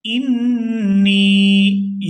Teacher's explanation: رَبُّكَ لِلْمَلَائِكَةِ اِنِّي، یہاں نون مشدد پر غنہ کریں گے اور آگے نون کو یا ساکن کے ساتھ ملاتے ہوئے کھینچ کر ادا کریں گے